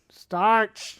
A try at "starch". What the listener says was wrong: Where are you getting the K from? No, it doesn't. It makes a ch sound.